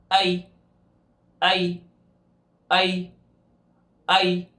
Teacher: زبان کا سینٹر والا حصہ اوپر کی طرف اٹھے لیکن شین سے بھی زیادہ فاصلہ ہو. تالو کے اور زبان کے سینٹر والے حصے کے درمیان جتنا شین کا فاصلہ تو اس سے زیادہ فاصلہ ہونا چاہیے.